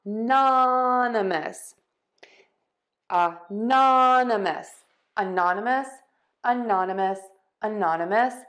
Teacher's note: We are going to stress the non, anonymous. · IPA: /əˈnɑnəməs/